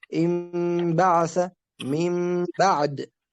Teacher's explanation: هو قلب النون الساكنة أو التنوين ميما ثم إخفاؤها عند الباء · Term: الإقلاب